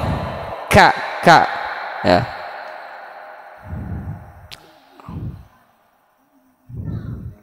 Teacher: Kaf asfala aqsal lisan, di bawah mahrujnya qaf.